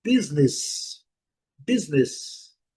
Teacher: A primeira sílaba é a forte, nós estamos vendo aqui pela marcação, e a pronúncia é business. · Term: Sílaba forte a primeira